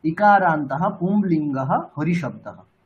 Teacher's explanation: আমরা অকারান্তহ শেষে বিসর্গ দিয়েছি, বিসর্গের উচ্চারণ তো করতে হবে। বিসর্গের উচ্চারণ আমরা হকার উচ্চারণ করি, বিসর্গের উচ্চারণটা হকার।